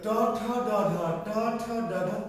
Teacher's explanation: এই যে ট ঠ ড ঢ মূর্ধন্য কোথায় স্পর্শ করে? দন্তমূলের পিছনে। · না, একটু সামনের দিকে, একটু তালু হলো সোজা উপরে, আর ট ঠ ড একটু তালু থেকে একটু সামনে, দাঁতের গোড়ার পিছনে। দাঁতের গোড়া, আমাদের দাঁত যতটুকু দেখা যাচ্ছে এর নিচে কিন্তু কি আরো আছে। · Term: পশ্চাৎ দন্তমূল